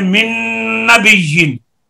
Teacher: नून साकिन का इदगाम नून में हो